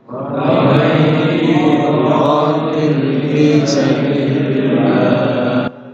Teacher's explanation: Lafzul Allah sabilillah dibaca tarqiq tipis.